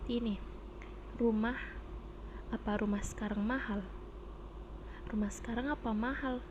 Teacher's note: kalimat tanya atau interogatif yang ditandai dengan pola intonasi datar naik